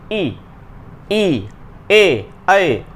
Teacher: इसमें जीव का अगला भाग जो है वो सक्रिय होता है इसलिए ये अग्र स्वर है